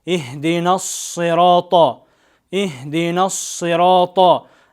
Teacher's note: Сот тыбышынын махражы жаңы эле айтып өткөндөй эле тилдин учу алдындагы астыңкы тиштердин ич тарабына тийген жерден ас деп эриндер кыймылдабастан окулат